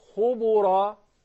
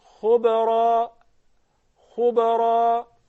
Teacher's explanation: The qalqala would not adopt the vowel of the previous letter. So I would not say khubura.